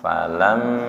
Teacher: mim bertasydid, ditekan dan ditahan dulu